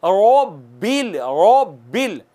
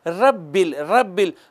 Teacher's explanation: आप ज़बान ऊपर तालू की तरफ ले जाएं, होंठ को गोल करें, मोटा हो जाएगा हर्फ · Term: रा को मोटा करना